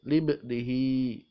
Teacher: Libnihi, ba sukun itu adalah temannya qaf, qad bijatin, qaf, ta, ba, jim, dal. Ba ini termasuk huruf qalqalah, huruf yang dibaca memantul atau bendal. Libnihi, maka disebut bacaan qalqalah.